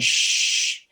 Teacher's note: sha is not a voice sound i'm touching here i'm saying shh and i don't feel any vibration coming from my my vocal chords